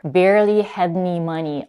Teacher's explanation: Almost no schwa, no any other vowel. The word any becomes ni.